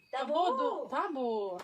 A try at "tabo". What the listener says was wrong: Tabo, not tabo, not tabo, tabo. Little, little bit speed Tabo. not slowly. Tabo. Not tabo.